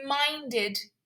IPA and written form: mɑːndɪd (minded)